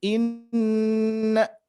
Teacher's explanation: Makanya nanti melibatkan hidung. Nah, nun bertasdid tentunya harus kita dengungkan. Ya, harus ditahan lebih lama, jangan inna tapi inna.